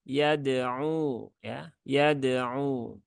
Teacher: cukup disentuhkan saja ke makhrajnya huruf dal, kemudian segera dilepaskan dan berpindah ke huruf ain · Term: qalqalah